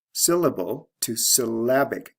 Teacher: And the adjective form is syllabic. Notice the stress shift from first syllable to second syllable. We have LE to IC ending plus the sound change.